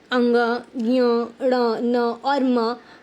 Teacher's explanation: ण न और म को अनुनासिक भी कहा जाता है क्योंकि इनका उच्चारण मुख के साथ नासिका से भी होता है